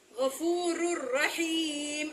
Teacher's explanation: را دو پیش رن ہے، لیکن را کو را سے ملائیں گے تو را پیش را رر ہو جائے گا. تو یہاں پہ ادغام کبیر بغیر غنہ کی را کی مثال آ گئی ہے، وہ بھی نون تنوین میں.